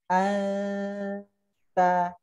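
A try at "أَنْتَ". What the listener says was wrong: Ahsan, tapi masih kurang harakatnya. Ya, kurang harakat 2. Anta sampai selesai harakat.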